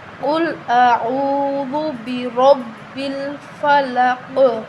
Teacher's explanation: را کے اوپر زبر ہے تو ہم اس کو موٹا پڑھیں گے۔